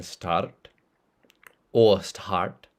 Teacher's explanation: rotic it's basically if you pronounce your r or not so in Indian English we do pronounce the r as in start